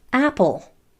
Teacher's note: The L is the vowel sound. The E is the vowel letter.